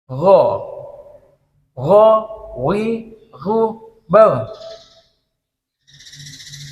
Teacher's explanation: untuk Gin itu puncaknya ya di ujung tenggorokan tenggorokan bagian atas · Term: Gain